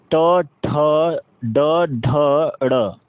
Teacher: ट वर्ग क्या है, ट ठ ड ढ ड़। ठीक है ना, इनका उच्चारण स्थान जो है वह यह मूर्धन्य होते हैं